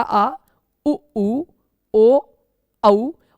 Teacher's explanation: जिन स्वरों को उच्चारित करते समय जीभ के पीछे का भाग, जीभ के पीछे का हिस्सा अधिक सक्रिय होता है उन्हें पश्च स्वर कहते हैं